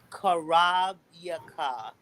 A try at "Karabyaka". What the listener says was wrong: Say it just like I was pronounced. You said it with a K. Karabyaka. Karabyaka. Karabyaka.